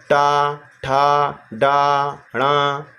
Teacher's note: इस सबको अगर बोलेंगे तो आपकी जीभ जो है आपकी मूर्धा को टच करेगी। आप इसको करके देखेंगे तो आपको पता चल जाएगा कि आपकी मूर्धा जो मुंह में कहाँ पर है।